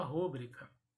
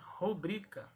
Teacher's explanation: Mas esta palavra trata-se de uma palavra paroxítona. Então, a sílaba tônica é a penúltima, é o bri.